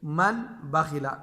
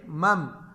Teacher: نہ نون ساکن کو ہم، نہ نون ساکن کی آواز نکالیں گے اور نہ تنوین کی آواز، بلکہ مم، نون ساکن کو ہم بالکل ہٹا دیں گے، اور کیونکہ ہم نے اس کو میم کے ساتھ بدلنا ہے اور غنہ کے ساتھ پڑھیں گے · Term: اقلاب